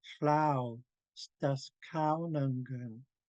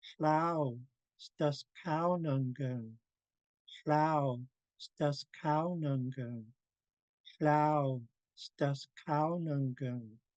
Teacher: But if you look in the phonetics, I've broken it down because, for instance, an elder would never say sta and then go into skaunangan. No, they would say it all as one word, staskaunangan. So we have flau, staskaunangan.